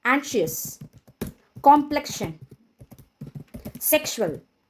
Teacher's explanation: sometimes letter X makes sh sound in between the words